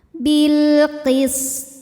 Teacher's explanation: Sin punya desis atau sifat saofir ciri khas dari sin · dengan pantulan yang besar jadi ini jangan sampai dibaca Bilqis ya sinnya tidak dipantulkan melainkan dialirkan